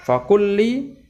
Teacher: Cara bacanya sama sebagaimana idgham, yaitu melebur ya, seakan-akan bertasydid ya, fakulli ya, karena di situ ada dua huruf yang sama, yang satu mati dan satu hidup. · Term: idgham mutamatsilain